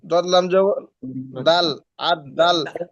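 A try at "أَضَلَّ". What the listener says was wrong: দাল কেন আসলো? এখানে দাল কোত্থেকে আসলো ভাই?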